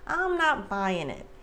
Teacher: the g at the end of buying is typically not pronounced like americans reduce the g at the end a lot sometimes · Because it's such a casual expression, the G at the end of buying is typically not pronounced.